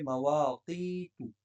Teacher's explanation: اور یہاں پر یا ساکن ہے تو یا ساکن سے پہلے زیر یا مدہ ہو گئی، تو یا مدہ ہے، ایک الف کے برابر کھینچ کے پڑھیں گے · یہاں پر آپ مواقیت کو پڑھتے وقت قوف کو قلقلے کی آواز میں پڑھیں گے